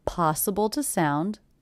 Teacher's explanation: The word to is definitely reduced to the schwa, so I may mark that, so I don't forget to reduce it.